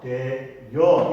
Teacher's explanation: 반모음을 추가해서 반모음이 첨가돼서 되여 이렇게 이중모음으로 발음을 해도 가능하다, 허용이 된다 이런 얘기입니다.